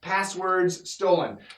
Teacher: when we have RDS together it makes a Z sound and the Z and the S are similar sounds and the